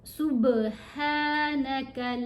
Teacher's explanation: قالوا سبحانك، یہاں با کے اوپر کلکلا ہے اور یہ ہا پڑھی جائے گی، اس کو خا کی طرح موٹا بھی نہیں پڑھتے اور ہا کی طرح بالکل گلے کے اگلے حصے سے بھی نہیں ادا کرتے، یہ چسٹ سے ادا ہوگی آواز. سبحانك لا علم لنا إلا ما علمتنا إنك أنت العليم الحكيم.